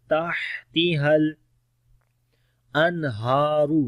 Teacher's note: کے اندر صفت ہمس بھی ہوگی، سانس جاری ہوگا، تحتہل انہارو، نون ساکن کے بعد ہا آ گیا، اظہار کریں گے نون کا، ان بغیر غنہ کے پڑھیں گے